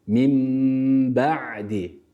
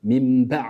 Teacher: b harfini burada patlatarak çok sert bir şekilde okumuyoruz normal haliyle okuyoruz B'yi